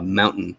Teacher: sometimes our T's in the middles they just turn into what linguists call a glottal stop